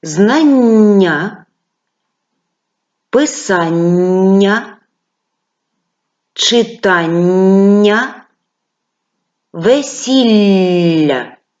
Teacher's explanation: ми вимовляли в цих складах м'які подовжені звуки на письмі ми передали їх двома однаковими буквами Запишіть будь ласка